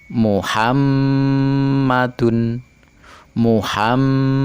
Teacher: cara membacanya adalah dibaca dengung dua harokat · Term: ghunnah musyaddadah